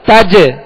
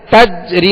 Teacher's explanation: یہ قلقلہ لوٹتی ہوئی آواز آ رہی ہے